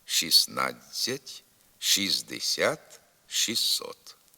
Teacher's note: буква т у них не вимовляється